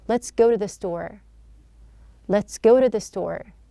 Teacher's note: So here, it's not a flapping sound. It is not a true T sound here. We have here a D sound. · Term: light D sound